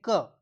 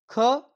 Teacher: ख ज्यादा हवा निकली तो महाप्राण है।